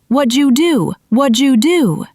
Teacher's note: The D and Y sounds combine to make a J sound. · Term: assimilation